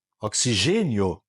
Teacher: de ditongo como que a que primeiro aparece é a semivogal a minha voz sobe daí chamar isso de ditongo crescente